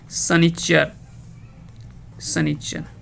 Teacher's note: क्योंकि तालव्य श का प्रयोग नहीं होता है, इसके जगह पे हम लोग दंत श का प्रयोग करते हैं